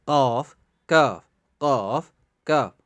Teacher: یعنی زبان کی جو جڑ ہے اور تالو، یعنی یہ دونوں ملا کے ادا ہوتے ہیں. زبان کی جڑ اور تالو سے ادا ہوتے ہیں. قاف کاف یعنی قاف اور کاف زبان کی جڑ، یعنی زبان کی جڑ، جو زبان کی جڑ اور تالو یعنی اوپر جو تالو والا حصہ ہے، ان کو ملا کے یہ دو حرف نکلتے ہیں.